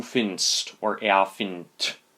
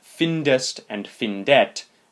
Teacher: The solution is to add an adapter before the ending, the letter E, basically as a filler vowel to get that ending to be pronounceable